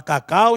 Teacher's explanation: o U da palavra cacau, gente, está sendo fracamente pronunciado. Daí, esse U ser semivogal. Consequentemente, 2 vogais, 2 sílabas na palavra cacau, tá bom?